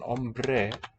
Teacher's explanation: the b develops as a transitional sound like in the word number · an n becoming an r if it's in contact with an m and the b develops as a transitional sound like in the